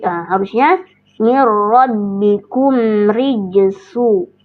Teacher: Baru kita masuk ke huruf ro. Huruf ro berharakat kasroh, namanya ro. Tarkik dibacanya tipis ya, tidak boleh dibaca tebal, tidak dibaca rijesu tapi ri ya.